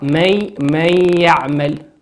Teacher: هل لا نشعر بوجود النون؟ لماذا؟ لأنها أدغمت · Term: الإدغام بغنة